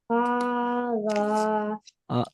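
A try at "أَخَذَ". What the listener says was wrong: Don't stretch. Don't say ah kho the.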